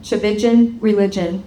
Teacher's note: But it starts with a TCH. The T is silent. It starts with a CH, like church, cha, and it rhymes with religion.